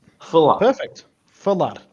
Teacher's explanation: We have th, which is a soft sort of an A, and then in the second syllable we have la, which is a pressed accented A